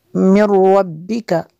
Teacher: طائف من ربک من ربک، نون پہ جزم ہے اور را پہ شد ہے، نون ساکن کے بعد را ہے حروف ادغام میں سے، تو یہاں پہ ادغام ہوگا، را میں غنہ نہیں کریں گے۔